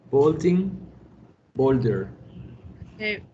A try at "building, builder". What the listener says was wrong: Build. No suena la U. Build. Como si hubiera directo la I. Building, builder.